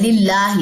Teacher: अल्लाह के लाम में जो ये लाम है ये बारीक पड़ा जाएगा क्योंकि पीछे जेर है, लिल्लाही। और अगर वक्फ लेना तो लिल्लाह, सिर्फ हा जज़म पड़ी जाएगी, बस इतनी सी साउंड आएगी, ये जेर गिर जाएगी।